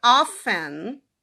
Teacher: O livro ele fala que o T nessa palavra, ele sempre foi silencioso, ou seja, sempre foi often, tá?